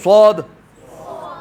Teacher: جہاں سے سین ادا ہوتا ہے اس کو تھوڑا سا موٹا کر دیں گے, ایسے پڑھتے ہیں صاد, ٹھیک ہے, ٹھیک ہے, تھوڑا سا موٹا کر دیں گے. زبان جو ہے وہ یہ نیچے والے دانتوں کے پیچھے جو ہے وہ جا کر ٹچ ہوگی تو صاد ادا ہوگا, ٹھیک ہے. بولیے صاد, ٹھیک ہے.